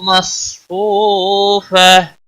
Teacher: مدہ ہے ایک الف کے برابر کھینچ کر پڑھیں گے، غولتا وقف کی صورت میں ہا ساکن پڑھیں گے، وقف بالابدال ہوگا، ملانے کی صورت میں ادغام باغنہ ہوگا، وَنَمَارِقُ مَصْفُوفَةٌ وَزَرَابِيُّ مَبْثُوثَةٌ